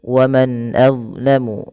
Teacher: bacaan izhar halqi, yaitu dengan memperjelas bacaan suara nunnya, diperjelas dengan baik